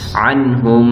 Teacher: تو یہاں پہ نون ساکن کے بعد حروف حلقی آیا ہے، تو یہاں پہ ہم اس نون کو ظاہر کر کے پڑھیں گے، اظہار کریں گے۔